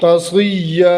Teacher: یا کی تنوین ہے، جب وقف کریں گے تو یہ الف میں بدل جائے گی